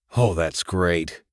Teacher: Rising intonation to show sarcasm.